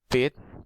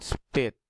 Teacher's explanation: The examples of allophone example like this: pit, aspirated puff of air escapes from the mouth, and then spit, unaspirated.